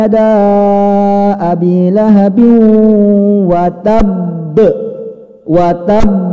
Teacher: cara bacanya beda ditahan dulu baru dipantulkan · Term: Qalqalah